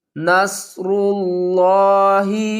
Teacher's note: را لام پیش غل، لفظ اللہ کو موٹا پڑھیں گے کیونکہ لفظ اللہ سے پہلے پیش ہے، را کے اوپر پیش ہے، را کو پر پڑھیں گے اور لفظ اللہ کے لام کو بھی پر پڑھیں گے